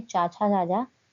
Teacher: आपका सही उत्तर है ए तालु। जब हम चा वर्ग का उच्चारण करते हैं, चाचा जाजा, तो हमारी जीभ जो है वो तलवे को टच करती है